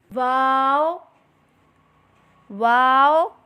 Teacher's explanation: दोनों होठों की गोलाई से अदा करें · نون واو واو دونوں ہونٹوں کی گلائی سے ادا کریں